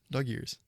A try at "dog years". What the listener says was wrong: No, you're saying ear. Dog years.